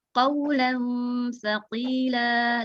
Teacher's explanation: Cuma karena sa itu kan bukan huruf isti'la, jadi jangan tebal, jangan diangkat pangkal lidah.